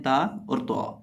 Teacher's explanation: देखिए ता और तो इन दोनों की आवाज़ मिलती जुलती है, दोनों का बिल्कुल पढ़ने का भी तरीकाकार एक है। जुबान की नोक सामने वाले ऊपर के दो दांतों की जड़ से जब लगती है तो ये दोनों हरूफ अदा होते हैं